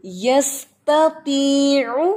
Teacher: تو کے نیچے زیر ہے تو آپ نے توی نہیں پڑھ دینا، توی ہونٹوں کو موو نہیں کرنا